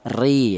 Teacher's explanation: huruf ra ini berharokat kasroh, ini dibaca tarkik atau dibaca tipis ya, ri ya. Di mana untuk seputar ra yang dibaca tarkik itu sudah kami bahas di episode ke-19, di mana polanya untuk ra yang dibaca tarkik itu ada 4 pola, yaitu yang pertama ini berupa huruf ra yang berharokat kasroh.